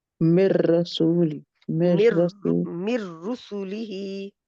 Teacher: वलाकिन अल्लाह यजतबी यज यजतबी मिन रसूलिही मन जहाँ पे यशा इदगाम गुन्ने के बगैर है, कंप्लीट इदगाम इसको कहते हैं, इदगाम कामिल, तो गुन्ना बिल्कुल भी नहीं आएगा, नून गायब हो जाएगा, उसमें मर्ज हो जाएगा रा में।